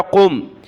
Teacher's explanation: قاف کو میم کے ساتھ ملایا، قم، قاف کو موٹا کیا